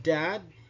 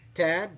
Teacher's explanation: whether or not the vocal cords vibrate when the consonant is produced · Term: voicing